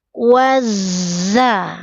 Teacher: dari wa langsung melebur ke zai